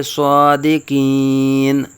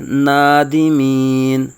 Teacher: نون زبر کو نون ساکن بنا دیں گے۔